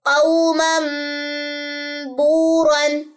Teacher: تو یہ مم پڑھا جائے، قو مم اور غنہ